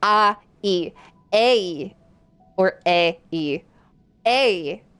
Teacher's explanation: the English A, that is a diphthong, which is to say that it is two sounds combined together, A, E, A, or A, E, A.